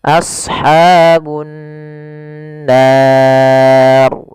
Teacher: Apabila ada nun berharakat tasydid, maka kita hukumi dengan bacaan gunnah. Cara membacanya yaitu menahan suara gunnahnya, tidak langsung. · Cara membacanya yaitu menahan suara gunnahnya, tidak langsung. Misalkan ashabun nar, harusnya ditahan dahulu.